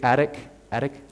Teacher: if it's between vowels you flap the tea so it's kinda sort of like an R or a D sound almost